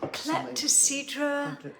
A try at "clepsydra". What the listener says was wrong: It's not klepto.